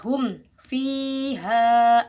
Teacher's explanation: ada mim sukun bertemu dengan huruf a maka disebut izhar syafawi izhar jelas tidak didengungkan seperti Ikhfa Syafawi